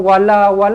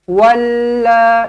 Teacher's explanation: ada sabdu tau dekat lam, jangan wala, tak boleh, walla, lekatkan